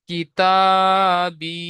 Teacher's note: ইয়া মাদ্দাহকে এক আলিফ পরিমাণ টান দিয়ে পড়তে হবে